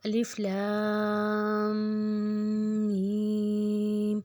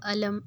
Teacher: ان کو ہم نے الگ الگ ہی پڑھنا ہے اور ان کو 6 حرکت لمبا کرنا ہے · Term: حروف مقطعات